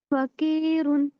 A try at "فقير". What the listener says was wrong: کی نہیں ہوگا نا بیٹا. کی مطلب کاف. ہمیں کرنا قی قیر قیر. آپ کہیں قاف. صرف اتنا کہیں. قاف ہوٹ نہیں بولو گا. قاف. تھوڑا اور کریں. قاف قی قی. کی نہیں کہیں. قا کہیں. قا قا قا قا نہیں. قا قو قو قو. قا